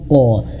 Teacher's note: Ditahan dulu baru haq, dan tebelkan pantulannya. Haqqo bukan hak, seperti itu ya.